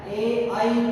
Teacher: ए और आई का उच्चारण स्थान कंठ भी होगा और तालु भी होगा। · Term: कंठ तालु